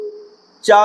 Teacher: चा अपने वर्ग का पहला वर्ण है इसलिए यहां पर महाप्राण ना होकर यहां पर अल्प प्राण होना चाहिए था